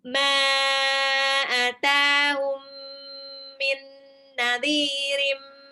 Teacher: Atahum mim sukun ketemu mim harus dia dempet harus digunnah. Tahan 2 sampai 3 harokat. Min nadhirim, nun sukun ketemu nun juga itu harus digunnah.